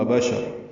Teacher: حمزہ اقصی حلق سے ادا کریں گے ، با شین جلدی ادا کریں گے، را پر پڑھیں گے،